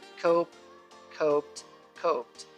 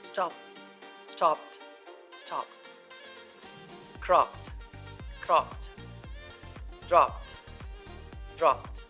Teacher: if a word ends with p sound like cope, coped, coped, one e is dropped here, then the ed ending is pronounced t.